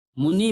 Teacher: जहां ह्रस्व ई का होना चाहिए प्रयोग, वहां पे दीर्घ ई का प्रयोग करते हैं। · लिखते तो ह्रस्व ई हैं लेकिन उच्चारण उसका दीर्घ ई में करते हैं।